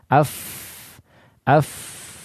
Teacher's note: keluar melalui bagian dalam dari bibir bawah dengan ujung dua gigi seri atas dan dia memiliki sifat al-hamas, af dan juga rikhwah ya, af. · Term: huruf fa